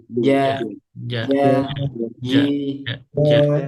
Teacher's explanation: Caranya pakai tengah lidah. Itu biasanya pakai ujung lidah. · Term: jim